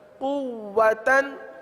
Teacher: واو پر تشدید ہے اور واو کو تھوڑا سا رک کر پڑھیں گے